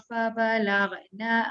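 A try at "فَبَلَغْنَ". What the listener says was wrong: Dia berhenti, tak boleh berhenti mengejut. Ambil balik daripada fabalau. Ghain tu masih lagi ada lantunan. Dia kena baca dengan tidak melantun. Fabalau. Fabalau.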